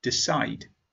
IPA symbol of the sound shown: d